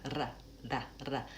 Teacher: Might be a short tap up. That's called a flapped R. It's actually very similar to a flap T that we use in other places in American English.